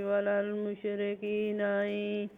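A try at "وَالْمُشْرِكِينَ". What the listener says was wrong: वलल नहीं, लाम पे कलकला नहीं है, वलल मुशरिकीना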